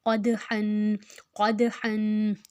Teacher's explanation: اب ہا جو ہے حروف ہلکی آ گیا، قاف موٹا آ گیا ، دال جو ہے حروف کلکلا، جازم ہے دال کے اوپر